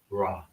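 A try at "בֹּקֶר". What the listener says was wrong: Boker. Whatever the last letter is, you don't want to add another syllable to it. It would just end in er. If you say ra, then that means we have to add another letter.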